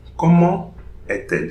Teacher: So here between the T and the A, no liaison.